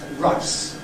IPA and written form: raɪs (rice)